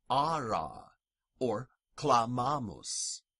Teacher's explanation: Latin long A, is really just a lengthened version of the short vowel A.